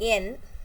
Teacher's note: And n, in the case of n, it's also voiced sound and also when when we say n, our tongue is touching the teeth ridge and our through this our mouth is completely closed and the air comes through nose. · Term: alveolar